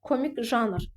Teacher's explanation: janr artıq bu isim rolunu oynayır və vurğu birinci hecanın üzərinə düşür